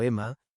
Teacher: con una oclusiva glotal inicial, una vocal reducida y una vocal larga bajo el acento